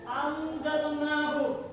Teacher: non sukun, non mati bertemu dengan huruf za, itu termasuk bacaan ikhfa